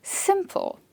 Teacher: Simple, 2 syllables and the first syllable is stressed.